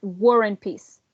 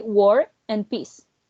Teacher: we have the r and then we have a vowel and the r joins the two words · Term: linking